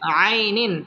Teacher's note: আই জবরের বাম পাশে জজম ওয়ালা ইয়া লিনের হরফ তাড়াতাড়ি পড়তে হবে